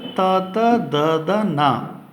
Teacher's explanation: ಇನ್ನು ತವರ್ಗಾಕ್ಷರಗಳು, ತವರ್ಗ ಅಂದರೆ ತ ತ ದ ದ ನ, ಇವುಗಳು ಹಲ್ಲುಗಳ ಸಹಾಯದಿಂದ ಹುಟ್ಟುವುದರಿಂದ ಇವುಗಳನ್ನು ದಂತ್ಯಾಕ್ಷರಗಳು ಅಂತ ಕರಿತೀವಿ. ಅಂದರೆ ಮೇಲ್ಭಾಗದ ಹಲ್ಲುಗಳು ಇದೆಯಲ್ಲ, ಅದಕ್ಕೆ ಆ ನಾಲಿಗೆ ಹೋಗಿ ಅದನ್ನು ಒತ್ತಿ ಈ ಒಂದು ಅಕ್ಷರಗಳು ಉಚ್ಚಾರಣೆಯಾಗುತ್ತೆ